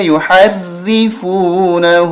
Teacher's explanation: فا واو پیش فو، نون زبر نا، ہا الٹا پیش ہو، ثم یحرفونہ۔ را پہ زیر ہے، را کو باریک کریں گے، یحرفونہ۔ اب یہاں دیکھیں نون ساکن کے بعد آگے بار، تو اس نون ساکن کو بدل دیں گے چھوٹے میم کے ساتھ۔